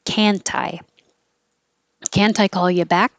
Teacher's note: the t can connect to the eye so it'll sound like kantai can't i call you back can't